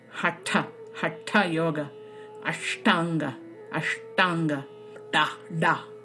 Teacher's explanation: Then you come to the third position that is called the retroflex, or the cerebral tongue position, where the tip of the tongue is striking the roof of the mouth